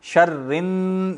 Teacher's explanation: یہ غنہ ہے کیونکہ نون آ گیا, نون پہ شد ہے